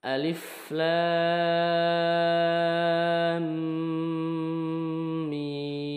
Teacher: Tidak rapat dari awal, tetapi mi panjang dulu selama 6 harokat panjangnya, kemudian baru bibir rapat ataupun nutup. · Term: mim sukun